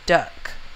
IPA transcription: dʌk